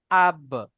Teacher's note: বার উপরে সাকিন এসছে, বা হুরুফে কলকলা, তাই বাকে কলকলা করে আগের অক্ষরের সাথে মিলিয়ে পড়তে হবে।